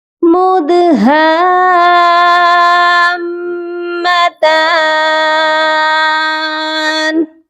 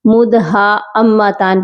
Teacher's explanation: یہاں پر حمزہ نہیں ہے، ہا کے ساتھ الف مدہ ہے، اس کو ہم کھینچ کر پڑھیں گے، اور الف کے اوپر مد بھی ہے، تو 5 الف کے برابر ہم اس کو لمبا کریں گے، اور پھر ہم اس کو میم مشدد کے ساتھ ملائیں گے اور غنہ بھی کریں گے، کیونکہ میم مشدد پر بھی ہمیشہ غنہ کیا جاتا ہے۔